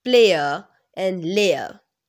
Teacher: in British we don't pronounce R at the end